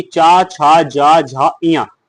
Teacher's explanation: जीभ को छूते हुए तालु से होती है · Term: तालव्य